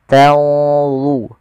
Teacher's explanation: ada nun mati ketemu dha, ikhfa-nya langsung ke dha, agak tebal